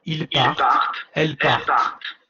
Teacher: La única diferencia que tiene la tercera del plural es la geminación o el alargamiento, vamos a decirlo así, de la última dental.